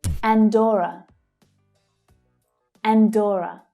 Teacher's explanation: So that stressed syllable is O, as in door. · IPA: ɔː